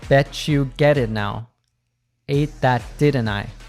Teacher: She puts the most emphasis on the words get and didn't. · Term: intonation